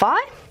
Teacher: It's a diphthong, so we get 2 slots.